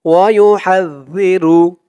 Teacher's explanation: জালের উচ্চারণ করার সময় মুখটা একদম পাতলা হয়ে যায়, মানে আওয়াজটা একদম পাতলা হয়ে যায়, নরম হয়ে যায়।